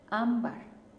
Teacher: Ámbar también termina en R, su sonido fuerte está en am, por la M, ¿no?